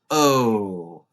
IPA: əʊ